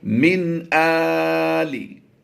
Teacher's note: तो हमजा खड़ी ज़बर आ की आवाज़ देंगे। याद रहे, नून साकिन के बाद जब भी हुरूफ़े हल्की में से कोई हरफ आएगा तो वहाँ पर हम इजहार करते हुए पढ़ेंगे, यानी गुन्ना नहीं करेंगे